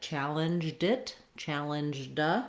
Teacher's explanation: It's almost like the D jumps onto the word it